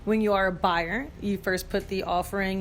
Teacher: notice how she really punches the word buyer because you can be a buyer or a seller when you